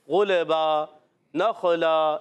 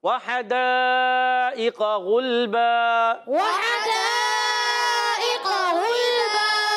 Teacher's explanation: गैन भी उर्फ़े मुस्तालिया में से मोटा रखना है। गैन लाम पे गुल, लाम को हिलाना नहीं।